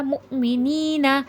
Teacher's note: یا ساکن سے پہلے زیر نی میں تو تھوڑا کھینچ کے پڑھا جائے گا کیونکہ یا مد ہے · حمزہ پہ جزا میں جھٹکا آئے گا